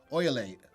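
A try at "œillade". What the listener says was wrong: No. No, the L is not pronounced. It's Uyad. Uyad? Uyad?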